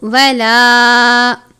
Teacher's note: الف مدہ چھوٹی مد ہے، 2 یا 3 حرکات کے جتنا لمبا کر کے پڑھیں گے